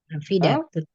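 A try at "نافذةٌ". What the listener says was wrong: Nafidatun. Tanwin ya. Nafidatun.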